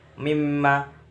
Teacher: bacaan idgham bi gunah sebab nun sukun bertemu mim